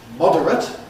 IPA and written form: ˈmɒdərət (moderate)